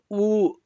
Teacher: ಉ ಅಂತ ಹೇಳುವಾಗ ತುಟಿ ಹತ್ರಕ್ಕೆ ಬರುತ್ತೆ · ಎರಡು ತುಟಿಗಳನ್ನು ಸೇರಿಸಿ ಅಥವಾ ತುಟಿಗಳನ್ನು ಹತ್ತಿರ ಮಾಡಿ ಉಪಯೋಗಿಸಿ ಹೇಳುವಂತಹ ಅಕ್ಷರಗಳು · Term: ಓಷ್ಠ್ಯಗಳು